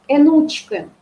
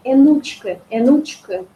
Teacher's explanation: То есть у нас было, смотри, учка, А не смотри, вот энучка, да, то есть тоже такое, и вроде и двойное ударение, но при этом больше все-таки акцент на первый гласный. Энучка.